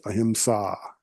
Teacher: There's the long A, which gives you a little longer duration